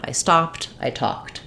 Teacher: we just continue to have the voice off and use a t sound which is also voiceless so same thing with talked the letters Ed say the T